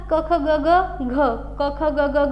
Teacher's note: यांचा उच्चार करता असं लक्षात येईल की कंठातून हवा बाहेर फेकल्या जाते म्हणजे कंठातून आवाज निर्माण होतोय